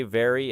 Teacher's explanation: To produce V, allow the upper teeth to touch the lower lip gently while air passes through and the voice vibrates, because the contact between the teeth and lip creates the friction that gives V its recognizable sound.